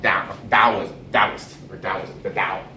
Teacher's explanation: So it's more sort of like now, the tongue slapping against the front hard palate